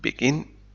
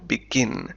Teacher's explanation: فالأفعال التي تحتوي على مقطعين مثل begin نضع الشدة أو stress على المقطع الثاني، نقول begin.